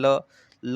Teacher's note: ल है, जीभ को आपके पास आप जो है दांत के पास लगाएंगे, ल ल ऐसे बोलते समय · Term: दंत व्यंजन